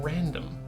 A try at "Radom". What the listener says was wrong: No, there's no N. It's Radom.